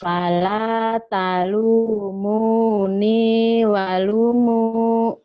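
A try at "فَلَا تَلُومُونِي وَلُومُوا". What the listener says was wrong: Bukan. Fa-nya pendek. Diulang lagi. Ayo dilihat baik-baik. Lihat baik-baik yuk.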